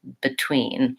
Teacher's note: Similar to that, the word between, I will often hear people saying between with an E vowel, and it should be an I vowel, short and unstressed. So the stress in this word is on tween. That has the E green tea vowel, tween.